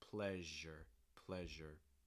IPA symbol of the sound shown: ʒ